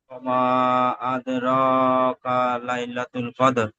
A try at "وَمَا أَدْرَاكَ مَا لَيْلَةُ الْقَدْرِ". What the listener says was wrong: মাটা ছেড়ে গেল أدراك ما أدراك ما